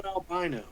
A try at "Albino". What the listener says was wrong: It's Albino. There's no I in it.